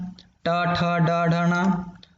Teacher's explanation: मूर्धा से ये टा वर्ग पूरा हो रहा है